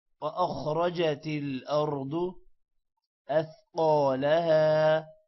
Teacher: خا موٹا ہے، را بھی موٹا ہے، ارض کا را بھی موٹا ہے اور ضاد بھی موٹا ہے